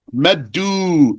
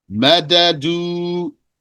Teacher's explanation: Its origin is madadu, and we omitted the haraka and then merged the dal into the dal